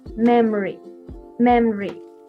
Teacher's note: this memory with the deletion, we omit the O sound.